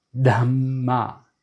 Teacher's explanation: That's aspirated DH, and there's a double M, there's a double consonant.